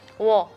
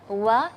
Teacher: agak sedikit e ditekuk maka kedengarannya suaranya tebal W ya wo seharusnya melafalnya wa yang tipis